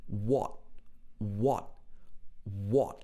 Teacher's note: he uses the very british o sound here what but he doesn't say the t sound he says